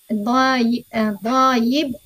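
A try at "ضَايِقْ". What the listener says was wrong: Doyik pakai qaf. Doyik.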